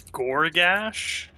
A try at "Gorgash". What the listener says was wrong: Yeah, Gorgash. Instead of a U, it's an O.